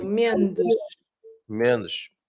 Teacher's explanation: In Portuguese, when you have an S at the end of words and there is no vowel after words, so no vowel sound after words, then you're going to pronounce it as a sh